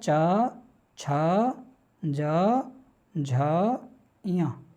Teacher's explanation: इन वर्णों का जो उच्चारण स्थान है वो क्या है? तालु।